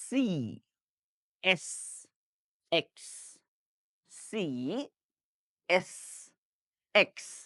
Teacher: একই জায়গা থেকে উচ্চারিত হয় সি এস এক্স এই তিনটাই হচ্ছে একই জায়গা থেকে শীষ দেওয়ার মত করে like this সি এস এক্স সি এস এক্স সো সি এস